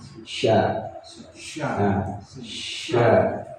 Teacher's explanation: huruf shin ini makhrajnya itu di lidah bagian tengah. Ya, di lidah bagian tengah.